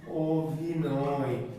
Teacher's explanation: যখন লিখছি অভিনয়, তখন কিন্তু অ থাকছে না, কি হয়ে যাচ্ছে ও